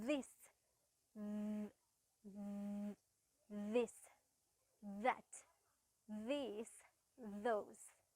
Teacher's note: පොඩි vibration sound එකක් එක්ක තමයි th sound එක අපි produce කරන්නේ.